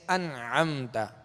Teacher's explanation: اب ان میں نون ساکن ہے، اور نون ساکن کے بعد انعمت عین ہے، عین حروف حلقی میں سے، لہذا یہاں غنہ نہیں کریں گے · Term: اظہار